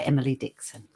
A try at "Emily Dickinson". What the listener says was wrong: Emily Dickinson. Emily Dickinson. You said Dixon every time, I thought.